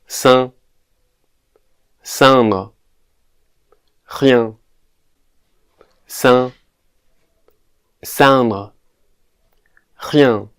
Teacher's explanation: This is like the A sound in a word like ma, but nasalized